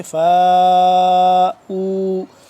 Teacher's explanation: فا الف مد زبر فا 4 سے 5 الف کے برابر اس کو لمبا کریں گے